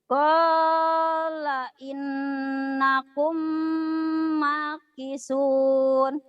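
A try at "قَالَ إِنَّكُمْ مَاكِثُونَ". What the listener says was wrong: qala innakum ma-nya panjang. Makisun. Coba lagi.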